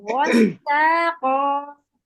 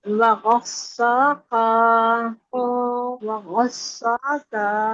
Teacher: गॉइन मोटा, सीन बारीक, कॉफ मोटा, तो गस्साक़ा.